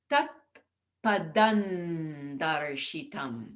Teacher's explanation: the D represents a sound at the teeth, where the tongue comes to the teeth. So it can be tat padan darshitam because of the darshitam.